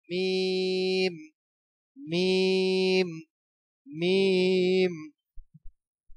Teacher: মিম 4 আলিফ পরিমাণ লম্বা হবে